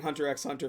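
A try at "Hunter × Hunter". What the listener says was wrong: You have to hit the next peak of hipsterdom and stop pronouncing the X. For a long time, it was like a meme that you had to pronounce it that way or you're like a casual.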